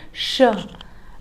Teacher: इस श का उच्चारण करते समय जिह्वा का अग्रभाग तालु को स्पर्श करता है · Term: तालव्य श